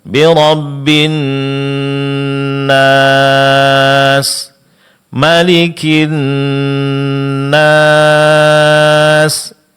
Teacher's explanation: pada mad arid lis sukun, yaitu berhenti pada setiap akhir ayat. Jangan lupa itu dipanjangkan 4 harakat.